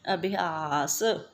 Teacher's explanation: ਆਸ ਤੋਂ ਪਹਿਲਾਂ ਜਿਹੜਾ ਭੱਬਾ ਹੈ ਉਸਨੂੰ ਏ ਦੀ ਆਵਾਜ਼ ਆਉਂਦੀ ਹੈ